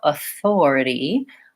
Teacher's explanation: the second syllable these other syllables will be short so Authority I want to make sure I'm lengthening on the Thor · my stress is going to be on the second syllable these other syllables will be short